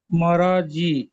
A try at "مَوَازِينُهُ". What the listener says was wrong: মা ওয়া জি। আর মারা বলছেন, র পড়ছেন কেন, ওয়াও পড়েন। মাওয়াজি, নুন পেশ এখানে আপনার ওয়াওটা র হয়ে যাচ্ছে, ওটা আপনি যখন সবক তৈরি করবেন ওই ওই জিনিসটা ঠিক করে